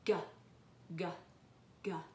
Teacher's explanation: does it vibrate your vocal cords yep so this is a voiced sound